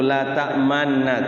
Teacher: caranya gunnahkan dulu, kemudian isyarah mencucu ke depan mulutnya, tarik ke belakang, gunnahkan lagi. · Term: ismam